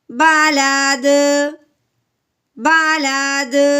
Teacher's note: حروف قلقلہ کے اوپر جب جزم آ جائے یا حروف قلقلہ جب ساکن ہو جاتا ہے, جیسے اب یہ وقف کی صورت میں ساکن ہو گیا ہے تو اس کو ہم نے کیا کرنا ہے, ہلا کے پڑھنا ہوتا ہے